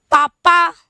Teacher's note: प वर्ग तो सीधे आपके होठ मिलते हैं